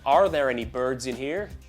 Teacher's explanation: The only R you can hear is on there any.